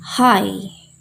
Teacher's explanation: This is a glottal sound, which means it's made in our throat. It's as simple as breathing out. We can hear our breath but not our voice